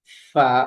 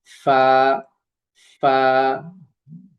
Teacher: নিচের ঠোঁটের পেট সামনের উপরে দুই দাঁতের আগার সঙ্গে লাগিয়ে উচ্চারিত হয় ফা, অর্থাৎ এই যে যে দাঁতটা আছে এখানে লাগবে ফা।